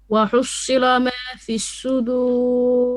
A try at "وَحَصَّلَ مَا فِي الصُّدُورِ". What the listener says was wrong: You're making your lam heavy. You're saying وحصل لا. No, وحصل. Lam is flat. Make sure you go back and correct this because you're making the sad heavy, you're also making the lam after this a bit heavy.